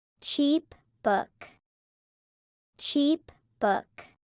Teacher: The P in cheap and the B in book are lip sounds. They connect.